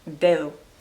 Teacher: It's like they're saying a TH sound instead of a D.